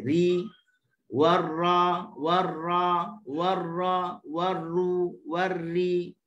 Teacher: Seterusnya dia bersifat dengan takrir. Takrir ni getar. Getar ni kita nak pula wa akhfi takriran. Okey, getar dalam skala yang kecil. Ri, warra, warru, warri.